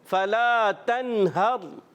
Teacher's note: اس نون ساکن میں غنہ نہیں کریں گے، اظہار حلقی ہوگا، نون کو ظاہر کریں گے. اور پیارے بچوں اس را ساکن سے پہلے زبر آنے کی وجہ سے یہ را پر ہو جائے گا، موٹا کریں گے.